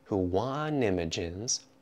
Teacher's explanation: Here the T gets completely removed from want.